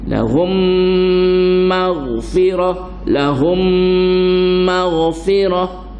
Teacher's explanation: Cara dengungnya inna rabbahu bihim. Kalau mim bertemu dengan mim idgham syafawi, kita tekan berat